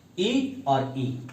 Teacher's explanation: तालु या तालव्य, यानी जिन स्वरों का उच्चारण जो है तालु से होता है। तालु हमारा जो है मुख में जो बनता है, ई और ई यानी छोटी ई और बड़ी ई।